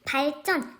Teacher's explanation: 리을과 지읒이 만났더니 예사소리인 지읒이 된소리 쌍지읒으로 변하고 있죠